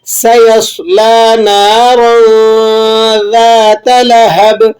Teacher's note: نارا، را کے اوپر حرکت ہو تو اسے موٹا پڑھتے ہیں، نیچے حرکت ہو تو باریک پڑھتے ہیں۔ ذات، ذال اور تا دونوں باریک حروفوں میں سے ہے۔